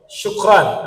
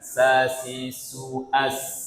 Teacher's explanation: shin itu wasatul lisan, makhrajnya di tengah lidah. Kalau sin, taraful lisan, di ujung lidah.